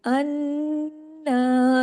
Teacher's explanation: نون پہ تشدید ہے، حق ادا کیجئے، اور نون کو ڈبل پڑھیے